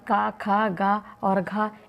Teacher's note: का, खा, गा और घा इन चारों का स्थान कंठ है